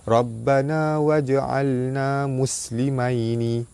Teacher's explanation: Sebelum tu ada ra baris atas, ra dibaca tebal. Jim mati di tengah kalimah. Qalqalah sugra, jim lantunannya tidak kuat. Baris atas bertemu alif mad asli panjang 2 harakat.